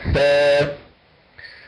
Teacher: حرف الثاء انه يشترك فيه طرف اللسان مع اطراف الثنايا العليا